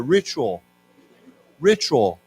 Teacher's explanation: Now, of course, when we say this word, the T has a ch sound to it, CH sound, ritual.